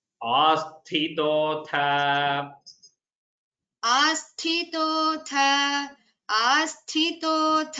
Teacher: there are three takaras where two are mahaprana and the one in between is alpaprana